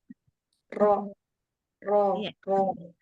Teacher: bunyi yang mengalir hanya sebagian ketika mengucapkan huruf ro karena terhalang oleh sebagian besar ujung lidah pada saat bunyi itu keluar ya jadi bunyinya tertahan oleh eh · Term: sifat bainiah